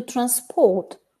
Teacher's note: the stress on the first syllable we've got the noun transport if we put it on the second syllable we've got the verb transport